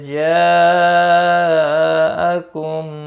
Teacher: جاءکم یہاں پر مد متصل ہے، 4 الف کے برابر کھینچ کر پڑھیں گے۔ میم ساکن کے بعد دوسرا میم آیا ہے، ادغام شفوی ہوگا، غنہ کے ساتھ پڑھیں گے۔ مو واو مدہ ہے اور سین کے اوپر کھڑی زبر ہے، 1 الف کے برابر کھینچ کر پڑھیں گے۔